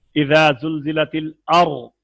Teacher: را ساکن سے پہلے زبر ہو تو پر پڑھنا ہے